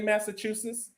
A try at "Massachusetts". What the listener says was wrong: Add a T, bro. It's just a T in there. Sits.